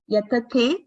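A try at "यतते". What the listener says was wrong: No, yatate. So second takara you're giving a stress. Yatate. Same. Same effort for both the takaras.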